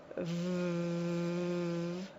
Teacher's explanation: in English V is made by the lip on the teeth and air